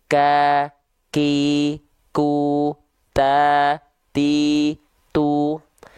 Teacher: tuh sekarang kita beri vokal harakatnya ka ki ku ta tu sebenarnya dia ada percikan nafasnya cuman Kehalangin sama bunyi vokal harakatnya aja